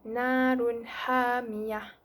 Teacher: sebut dengan jelas tanpa dengung kerana selepasnya ia bertemu dengan ha. Ha yang merupakan izhar halki.